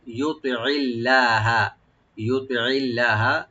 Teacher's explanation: তটাকে right দিবেন একটু, যেন একটু মোটা করে হয়। তুই হবে তে না তুই, আইনটাকে অবশ্যই রাইট দিবেন যেন গলার মাঝখান থেকে আসে।